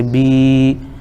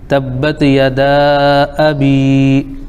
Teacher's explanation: یا مدہ ہو جائے گا، ایک الف کھینچیں گے